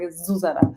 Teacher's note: So the stress is always on the first syllable.